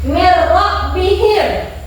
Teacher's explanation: Maka cara membacanya memasukkan suara nun sukun atau tanwin ke dalam huruf lam dan ro tanpa disertai dengung dan sengau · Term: idgham bila gunnah